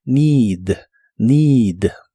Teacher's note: La doble E de esta palabra también se pronuncia como una I larga o doble.